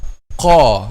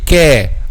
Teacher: So how we make the letter heavy? By raising the back of the tongue. Qa. This is raised. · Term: heavy letter